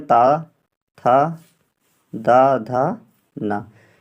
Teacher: दंत में ता, था, दा, धा, ना, ये वर्ड आते हैं